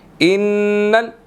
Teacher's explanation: नून मुशद्दिद है, यहाँ पर गुन्ना करेंगे